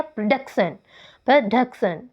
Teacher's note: जो एक्सेंट है वो सेकंड सिलेबल पर लगी है